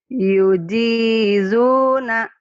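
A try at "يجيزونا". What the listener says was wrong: Ini rapuh, ini keras. Nah, yujizu. Ingat, dalam bahasa Arab itu beda huruf, beda arti. Yujizu. Nah, ini keras yang ini. Ayo, jangan rapuh.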